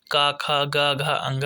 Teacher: जो क वर्ग होते हैं व्यंजन के वह कंठ ध्वनि होती है क ख ग घ अंग यह सभी आपकी कंठ ध्वनि होती